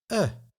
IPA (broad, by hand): ɘ